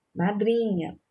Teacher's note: a sílaba tônica é o dri